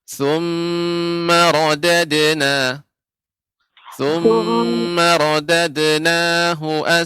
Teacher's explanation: Untuk qalqalahnya, dalnya lebih dipantulkan